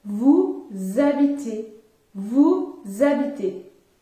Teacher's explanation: au pluriel, il faut effectuer la liaison et dire vous habitez